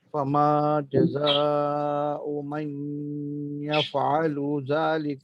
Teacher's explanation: أعوذ بالله من الشيطان الرجيم بسم الله الرحمن الرحيم أفتؤمنون ببعض الكتاب وتكفرون ببعض فما جزاء من يفعل ذلك It will be meme, and there will be an idgham of the ya with the noon, so it will be pronounced as yaf'alu.